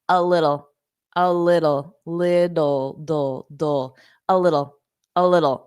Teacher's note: Very reduced. Those T's sound like very soft D's.